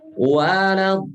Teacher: Mat asli ketemu huruf yang bertasdid, maka itu jadi 6 harokat. Waladolin. Lihat, hukumnya mat lazim namanya.